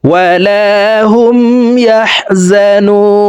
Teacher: তিন আলিফ টেনে নুনকে সাকিন করে ফেলবো